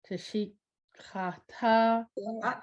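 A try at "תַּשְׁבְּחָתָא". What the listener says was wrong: Do that one syllable. Tush.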